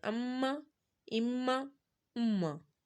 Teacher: پیش کو دونوں ہونٹوں کی گلائی سے ادا کرنا ہے، میم کو دونوں ہونٹوں کے خشک حصے سے ادا کرنا ہے